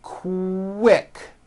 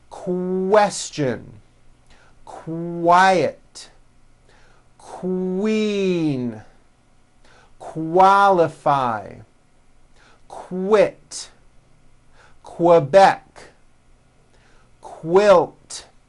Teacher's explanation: the word quick is pronounced with a K and a strong W sound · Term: q sounds